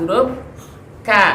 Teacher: Naik sedikit, bertemu dengan langit atas bagian keras, huruf K.